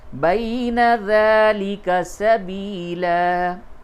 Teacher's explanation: یہ یا مدہ نہیں ہے بلکہ یا لین ہے، یا ساکن سے قبل زبر ہو تو وہ یا لین ہے، اس کو نرمی کے ساتھ بولتے ہیں ، لین کے معنی نرمی کے، تو نرمی کے ساتھ اس